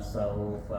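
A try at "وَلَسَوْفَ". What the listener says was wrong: Wala sawfa. Wala sawfa. La-nya pendek.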